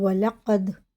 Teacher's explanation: دال میں قلقلہ، واو لام پہ زبر ہے، اسے جلدی پڑھیں گے، بالکل بھی نہیں کھینچیں گے